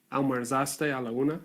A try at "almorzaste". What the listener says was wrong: Bueno, atención a la pronunciación. Bueno, yo escuché almuerzaste.